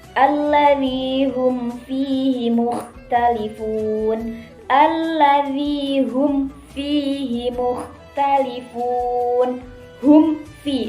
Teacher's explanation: Membaca mim itu disuarakan dengan terang dan jelas di bibir, serta mulut tertutup dan harus lebih diperjelas lagi bila mimati bertemu dengan wawu dan fa. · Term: idhar syafawi